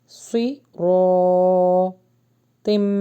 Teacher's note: سی رو کو ہیوی پڑھیں گے اور الف مدہ لانگ کریں گے